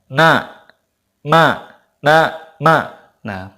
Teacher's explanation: pasti hidung kita ada sedikit getaran Nah itu menunjukkan bahwa mim dan Nun itu ada gunanya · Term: ghunnah